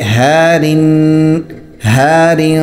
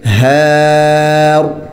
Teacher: غیر وقف کی صورت میں باریک ہوگا، لیکن جب ہم اس پر وقف کریں گے تو اس وقت را موٹا ہوگا